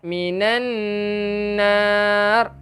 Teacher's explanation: Sebab ada wajibal gunnah. Dengungkan dahulu dua harakat.